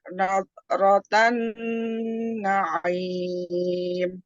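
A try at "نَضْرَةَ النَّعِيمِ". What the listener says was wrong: Nah, di sini masih nat kan? Nah, jangan jadi T. bod itu sifatnya rokhwah, kemudian istiqolah, kemudian apa lagi? Idbaq, kemudian isti'la, maka diangkat pangkal lidahnya, dilengketkan tengah lidahnya, kemudian sisi lidahnya ditempelkan di geraham atas, boleh kanan, boleh kiri, ataupun boleh keduanya.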